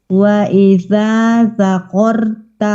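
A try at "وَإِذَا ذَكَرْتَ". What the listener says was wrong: Zaka. Kaf bukan qaf.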